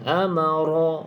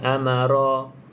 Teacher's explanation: Ra tersebut ra berbaris di atas, bacaannya bacaan tebal. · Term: Ra tebal